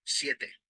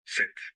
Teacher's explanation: When a word has the diphthong ye in Spanish, it usually corresponds to an open E in Portuguese.